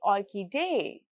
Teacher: Then we can talk about orchidee. It keeps its stress on the third syllable.